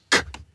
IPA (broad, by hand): k